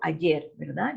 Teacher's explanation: lleva acento en la última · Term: agudas